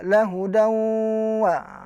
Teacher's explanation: Lahudawa itu didengungkan, dimasukkan dan didengungkan. Asalnya lahudan wa dibaca dengan memasukkan. Artinya waw ini ditasydidkan. Huruf nun sukunnya itu hilang. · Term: idgham bi gunnah